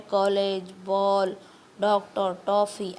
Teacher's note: इनका उच्चारण आ तथा ओ के बीच होता है